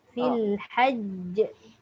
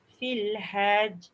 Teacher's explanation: Masuk jim terus tapi lantunannya tu lambat sikit. Dia lekat saja.